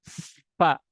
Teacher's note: Nah, ini fa harus ketahui makronya. Fa menyentuhkan ujung gigi seri atas bertemu dengan perut bibir. Fa mengeluarkan nafas.